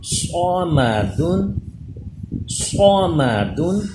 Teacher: صاد حروف مستعلیہ پر، میم اور دال باریک، صاد زبر صا، میم زبر ما، صام، صام، دال دو پیش دن، صامدن، صامدن، صاد کو پر کیجئے۔